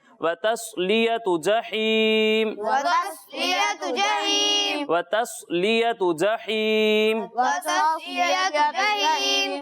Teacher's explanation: تا کو باریک پڑھنا ہے اور صاد کو موٹا پڑھنا ہے